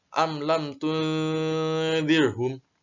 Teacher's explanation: Kalau ketemu mim sukun bertemu dengan lam dan mim sukun bertemu dengan ta ini tidak dibaca dengung. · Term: idhar syafawi